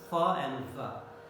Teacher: during the production of the fa, lower lip goes against the upper teeth, and the passage is narrowed down, but it is kept open, and there is friction sound. So it is the lower lip and upper teeth comes in contact. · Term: labiodental